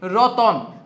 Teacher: ত আর ন এর মাঝখানে নতুন করে একটা অ চলে আসছে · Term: মধ্যস্কমের উদাহরণ, মধ্য স্বরাগমের